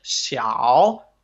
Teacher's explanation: 小 is third tone, okay? So it dips down and up.